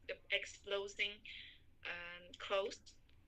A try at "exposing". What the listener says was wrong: Exposing. There's no L. Exposing.